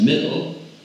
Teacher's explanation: especially at the end of words, such as middle, L dropping is more a working class habit